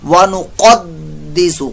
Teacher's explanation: दाल मुशद्दद कलकला हो रहा है, जमाओ ज्यादा होगा।